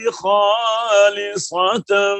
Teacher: یہاں پر گول تا کو ساکن ہا سے بدلا ہے، تو دو زبر تھی وہ بھی ختم ہو گئی ہے، کیونکہ دو زبر کو الف سے اس وقت بدلنا تھا کہ اگر وہ گول تا کے اوپر نہ ہوتی۔